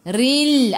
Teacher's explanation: Ra baris bawah kena baca dengan nipis. Tarqiq nama dia.